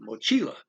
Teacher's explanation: So I put the accent automatically. I highlight the second to the last syllable, which is the most common thing